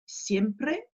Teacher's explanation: le r il est roulé la langue va venir faire des allers retours au niveau du palais derrière les dents · quand on est tout seul le r va être simplement rouler une fois